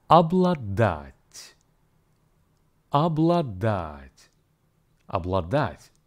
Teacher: the first syllable ob in a spoken Russian is actually pronounced as ab. The stress here falls on the last syllable, dat.